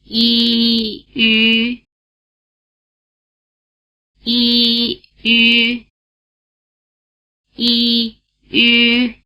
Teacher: It has roughly the tongue position of the vowel sound E, and roughly the lip position of the vowel sound U. If you pronounce a steady E sound, and then round your lips into an U position without moving your tongue, you'll get the U sound. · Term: U Umlaut